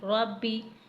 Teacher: رو کو موٹا پڑھنا ہے کیونکہ رو کے اوپر زبر ہے